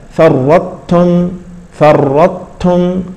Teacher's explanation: مشددا ف الطاء الاولى تدغم في التاء فرتم فرتم فرتم فرتم كان الطاء يعني ذهبت تماما بقي رسمها ولكن نطقها ذهب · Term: الادغام